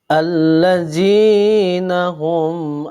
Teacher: cara membacanya dengan jelas di bibir dan mulut tertutup tanpa dipanjangkan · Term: izhar syafawi